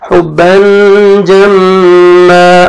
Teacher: میم مشدد ہے غنہ کریں گے لاسٹ میں جب سٹاپ کریں گے فتحتین پہ تو الف مدہ · حروف اخفاء میں سے جیم ہے آپ نے اب اخفاء کرنا ہے نوز میں ساؤنڈ لے کے جائیں گے